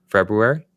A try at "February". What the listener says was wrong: He says the R. He believes in the R, Travis.